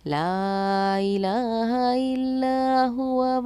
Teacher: حروف مدہ کے بعد حمزہ دوسرے کلمے میں ہے تو مد منفصل، اس کو ہم 2.5 الف کے مقدار کے برابر کھینچ کر پڑھتے ہیں